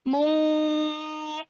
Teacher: Kalau ketemu huruf kof langsung ke ang. Langsung ke ang tapi angnya ang tebal. Mungkoir. Roknya dibaca tipis karena disukunkan dan sebelumnya berharokat kasroh. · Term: ikhfa yang tebal